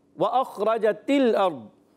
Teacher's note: दौद भी मोटा हो जाएगा मोटे उरूफ से। और दौद का मखरज है ज़बान का बगली किनारा ऊपर की दाढ़ों की जड़ों से। और दौद को कहते हैं हरफ़े हाफिया।